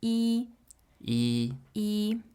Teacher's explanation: when you're referring to the number 1 as a number, you would pronounce it in the first tone